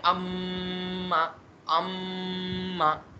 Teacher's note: लेकिन जब आप हालत गुन्ना में पढ़ेंगे, जब इन दोनों हर्फ पे गुन्ना हो रहा होगा, तो जो इनकी आवाज़ निकलती है ना, वो निकलती है नाक से।